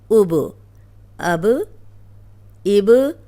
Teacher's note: اب یہ جو با ہے، جب بھی با پہ جزم آئے گی تو با کو ہلا کے پڑھا جائے گا